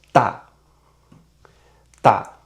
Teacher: Fourth tone is a dropping tone. It's from high to low and speak sharply. So it's like you say no in English.